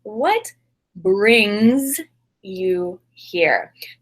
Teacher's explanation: for this form of the verb brings we need that z sound on the end